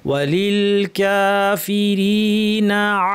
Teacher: বা খারাজ আছে ওল কাফিরিনা এখানে টান আছে ইমাদ ওল কাফিরিনা নাতে টান নাই এজন্য না মাঝখানে কোন গ্যাপ ছাড়া আসবে